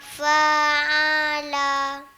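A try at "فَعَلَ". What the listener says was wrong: Tak panjang.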